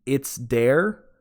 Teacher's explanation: d sound instead of a th sound